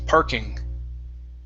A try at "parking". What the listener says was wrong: There you go. Parking.